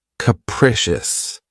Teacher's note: The next adjective, which is one of my favorites, is capricious. This word has three syllables and the stress is on the second syllable. Keep in mind that the first syllable has that schwa sound krecious.